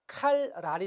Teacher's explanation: 뒤에 있는 니은이 리을을 닮아서 칼랄이 됐어요. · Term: 완전 동화